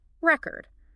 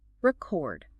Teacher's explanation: If it's a noun, like a vinyl record, the stress is on the first syllable, record. But if it's a verb, like to record a song, the stress jumps to the second syllable